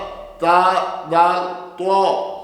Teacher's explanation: ये सामने वाले ऊपर वाले दो दांत, इनकी जड़ से नोके ज़बान लगेगी